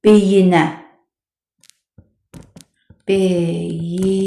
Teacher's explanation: Halı şəkilçisi qəbul etdikdə isə heç bir sait düşməsi olmur. Məsələn deyirəm ki, beyinə beyinə i düşmədi.